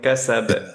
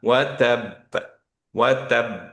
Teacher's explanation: খেয়াল করেন যে কাসাব যখন পড়ছি তখন কিন্তু ধরে রাখিনি, কিন্তু ওয়াতাব, ওয়াতাব একটু ধরে রাখলাম, তারপর ছাড়লাম